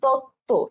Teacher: যুক্ত ব্যঞ্জনের সাথে সংযুক্ত ব ফলা অনুচ্চারিত থাকে, যেমন তত্ত্ব